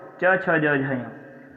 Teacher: ये तालु का स्पर्श करते हैं। कंठ का जो ऊपर वाला भाग होता है इसे कहते हैं तालु। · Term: तालव्य